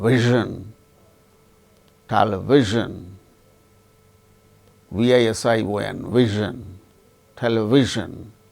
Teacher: Zh, this is voiced. This zh sound we don't have in Indian languages